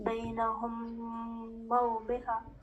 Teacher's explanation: ہم یہاں دو میم کا ادغام کریں گے اور میم زبر کے اندر تشدید ڈال دیں گے